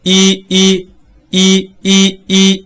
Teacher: 形和▁O▁是截然相反的啊，唇形是截然相反的。所以是吧，能感受到吧，别的都不动啊，你就这样理解就可以了，发一个▁O▁把嘴唇一展开就是阿了。好，我们来看几个练习。客车特色合格，客车特色合格，是吧？这里边阿给一个提示，阿千万不能发成阿，这就错了。不能哥哥，一定要这样发啊，不要压舌根，一压舌根就错了，因为它是比较通透的一种感觉。好，我们再来看一呢，它位于这个四边形的端点上，所以我们叫前高不圆唇元音，发音的时候嘴基本上就闭上了是吧，一微微张开，唇形是扁平的，然后呢上下齿相对，所以我们叫做齐齿乎嘛，是吧？然后舌尖儿和下齿接触，一一一，对吧？ 使舌面前部隆起和硬腭前部相对